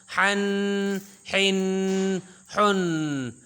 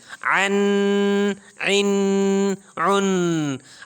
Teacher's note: ہا اور عین یہ گلے کے درمیان سے ادا ہوں گے